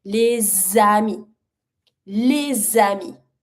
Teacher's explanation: I'm gonna repronounce over it the S to link with my second word.